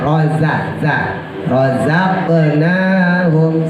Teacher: huruf zai sama sin makhrajnya sama antara gigi bawah sama gusi bawah. Tapi kalau emang ibu ribet, tempelin aja di bawah sekalian ya.